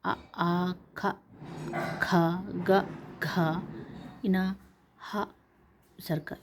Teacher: కంఠం నుండి పుట్టే అక్షరాలు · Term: కంట్యాలు